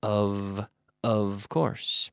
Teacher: when we have the word of with one F the F is pronounced like a V of the V which is a voiced or vocalized F so